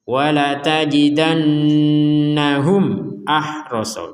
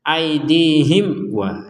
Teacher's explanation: Jadi mim sukun bertemu hamzah dibaca jelas.